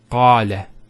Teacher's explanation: Notice the elongation of the A sound. Qala. Not qala, qala. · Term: long vowel